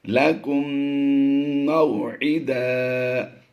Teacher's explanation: میم واؤ زبر مو، یہاں پر واؤ لین کا قاعدہ ہوتا ہے، اس لیے لمبا نہیں کریں گے اسے